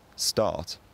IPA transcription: stɑ:t̪ᶿ